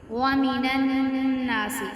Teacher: اب یہاں پہ غنہ کریں گے کیونکہ نون مشدد ہے